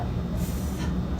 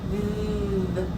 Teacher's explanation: We have the th sound for quiet, and we have turn on your voice and say th for noisy. So we'll show that difference with just a TH and then a TH with a line to show that it's noisy. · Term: tongue cooler